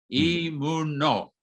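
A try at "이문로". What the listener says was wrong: 발음으로는 한글 발음으로는 그냥 노가 맞는데 이제 이름 이렇게 두 법칙 때문에 로라고 하는 게 맞죠.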